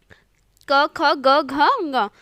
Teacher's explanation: क ख ग घ ङ ये सब कंठ से निकलने वाली वर्ण है। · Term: कंठव्य व्यंजन